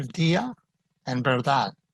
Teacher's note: it's a very soft d sometimes it's barely pronounced at all